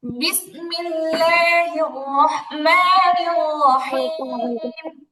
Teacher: বিসমিল্লাহ লাম মোটা মোটা হবে না, তো পাতলা হবে